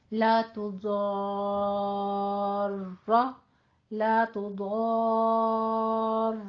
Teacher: مرقق تھی، باریک تھی، لیکن جیسے ہی ہم نے اس کے سٹاپ کیا وہ ساکن ہو گئی، اس سے پیچھے الف مدہ آ رہا ہے اور فتحہ ہے، تو ہم اس کو پھر پور کر لیں گے، وقف کی صورت میں یہ رائے مفخم بن جائے گی